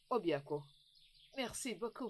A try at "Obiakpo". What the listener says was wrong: Au fait, ta façon de dire Obiakpo, tu sais, j'aimerais que tu utilises une voix un peu plus romantique pour prononcer ce Obiakpo. Pas Obiakpo comme si on allait à la guerre. Obiakpo.